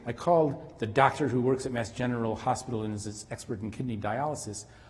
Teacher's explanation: I sort of run it together in a quick monotone, and then I end with a downturn.